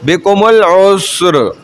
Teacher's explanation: را ساکن ما قبل ساکن ما قبل مضمون رو ساکن ہے اس سے پہلے والا حرف ساکن ہے, اس سے پہلے والا حرف پہ پیش ہے. بکم العسر تو رو موٹی رکھی جائے گی, وقف میں ہی ہو رہا ہے